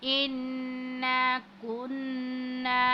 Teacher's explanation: नून मुशद्दिद है, इसके ऊपर हम गुन्ना करेंगे